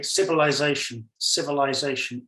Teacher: so I obviously we would spell it with the S and I think I pronounced it more with the S rather than the Zed or the Z for you guys